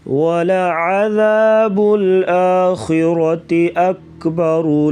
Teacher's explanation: را کے اوپر زبر تو را کو پر پڑھیں گے · خا کو پر پڑھیں گے، غلے سے ادا کریں گے